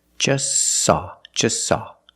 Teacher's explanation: the t is between consonants so don't pronounce it it's silent just saw you link the S with the S link them